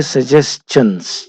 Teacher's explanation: اس کو پڑھتے ہیں سجیسچنس چ کے ساتھ، شن کے ساتھ نہیں پڑھتے